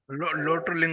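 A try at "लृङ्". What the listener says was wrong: లోటో లింగ్ కాదు లంగ్. లోటో లంగ్వత్. లింగ్ అని చెప్తే తప్పైపోతుంది. లోటో లంగ్వత్. లంగ్కి వేరే సూత్రాలు, లింగ్కి వేరే సూత్రాలు. తప్పు చెప్పొద్దు కదా. లంగ్.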